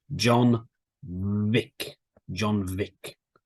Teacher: your top teeth touch your bottom lip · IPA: /v/